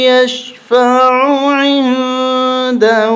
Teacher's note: یہاں پر اخفا ہوگا، ناک میں آواز چھپا کے پڑھیں گے